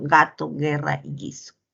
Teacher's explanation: Es sonoro, ¿no? Oclusivo velar sonoro.